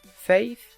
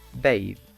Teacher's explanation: The tip of the tongue is close to the upper front teeth. This is the narrowing where the friction is made. Also, since these sounds have friction, we will call them fricatives.